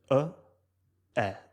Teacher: o som A é um pouco mais aberto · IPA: [ɐ]